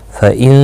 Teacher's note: فَإِنْ اخفا نہیں یہاں پر ہوگا، نون ساکن کے بعد حروف حلقی کا ہا آیا ہے، یہاں پر غنہ نہیں ہوگا، البتہ اظہار ہوگا۔ اس اظہار کو اظہار حلقی کہتے ہیں۔